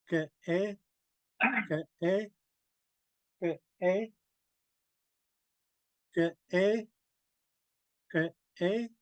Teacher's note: notice the glottal stop. There's a slight pause in there. Ka ka ka ka meaning no.